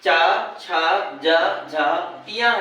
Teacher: ये तालव्य है इसमें वायु तालू से स्पर्श करती है